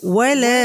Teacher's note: ওয়ালা এটা মধ্যে আসলি হবে, এক আলিফ পরিমাণ টানব।